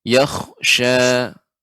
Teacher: Kha di sini lebih agak tebal ya. Huruf isti'la namanya. Yakhsha. Rahangnya tidak dikeluarkan.